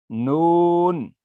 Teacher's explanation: زبان کا کنارہ جب ثنایا سے انیاب تک کے دانتوں کی جڑوں سے لگے گا تو نون ادا ہوگا